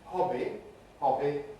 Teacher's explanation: the voicing switches on for the vowel and continues through the consonant